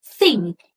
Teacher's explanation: So dental is a sound that produced by your tongue and your upper teeth. Dental sounds in English are the voiceless th as in the word think